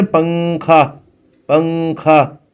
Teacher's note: تو نون کی آواز کو ناک میں چھپا کر پڑھنا چاہیے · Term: اخفا